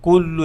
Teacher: তাহলে যদি কুল্লু বলতে যাই, অনেক সময় এই লামটা, প্রথম লামটা, এখানে দুইটা লাম তাই না, তাজদিদ আছে, তো প্রথম লামটা মোটা হয়ে যাওয়ার চান্স থাকে, কুল্লু এরকম শোনা যায়